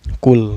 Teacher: Qul, ini lam mutlaknya, dibaca secara jelas ya, gak boleh dengung dan gak boleh memantul